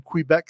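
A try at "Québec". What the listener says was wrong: Quebec. You don't pronounce the W. Quebec.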